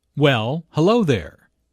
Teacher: Notice the emphasis on hello, which shows that did not expect to see Julia.